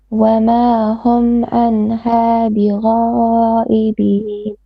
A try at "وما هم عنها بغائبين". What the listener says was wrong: I have to be a bit longer.